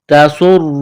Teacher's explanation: تا کو باریک کرنا ہے، سین میں سیٹی کی آواز پیدا کرنی ہے، پتلا کرنا ہے سین کو را کے ساتھ ملانا ہے، را کو موٹا کرنا ہے.